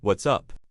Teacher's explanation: >> The question what's up often has a rising intonation on the word up when you are genuinely asking, but when it's used as a quick greeting, it often stays relatively flat, just acknowledging the person